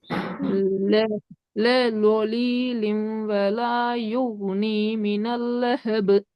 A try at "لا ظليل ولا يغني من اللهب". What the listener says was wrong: ஒரு இடத்துல லாம் வலா என்று பெய்துட்டு, இன்னொரு இடத்துல நீட்ட வேண்டியது நீட்டப்படல. திருத்திக்கோங்க. மினல்லா மினல்ல மினல்லஹது. பெரிய வரணும். மினல்லஹது.